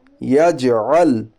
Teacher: جیم کے اوپر جزم ہے، جیم حروف قلقلہ کے 5 حرفوں میں سے ہے، اس لیے جیم پر قلقلہ ہوگا